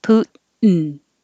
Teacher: You can say this with a T, Putin, or you don't say the T and you say it like mountain. You put your tongue in the T position and then you hold it there and make the N.